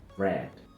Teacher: es una vocal relajada en la mandíbula, pero tensa en la lengua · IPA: /e/